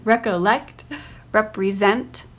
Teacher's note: in the words recollect and represent the third syllable is accented